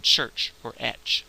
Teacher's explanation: If you say t and sh and say them very quickly together, you get what we call the ch sound in English, as in church or etch.